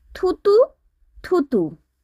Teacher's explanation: বর্গের প্রথম বর্ণ ত, দ্বিতীয় বর্ণ থতে উচ্চারিত হয়েছে, অর্থাৎ অল্পপ্রাণ ধ্বনি মহাপ্রাণ ধ্বনি হয়ে উচ্চারিত হয়েছে, তাই এখানে পিনয়ন হয়েছে।